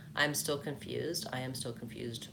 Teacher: I am still confused, with stress on confused. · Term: natural intonation pattern